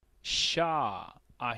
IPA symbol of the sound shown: ʃ